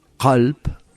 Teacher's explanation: si nosotros decimos calp con una k gutural, calp significa corazón